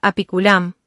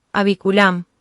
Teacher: Al analizar la palabra apiculam, observamos que tiene una sonorización en P, por lo cual se sustituye en B. Nos queda la palabra abiculam.